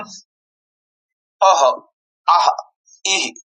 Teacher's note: जसं ह श्वास कंठापासून उच्चारण करावे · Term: विसर्ग